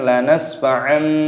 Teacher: semulanya fathah tanwin yang bertemu dengan ba, ini hukumnya dibaca iklab, maka diganti dengan huruf mim kecil